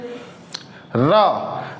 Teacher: ये जब जो हमारा दांत प्लस मसूड़ा जहां पे लगता है, जो वर्ड से होता है, जब वहां पे जीभ का टिप आगे सटता है तब हमारे निकलता है र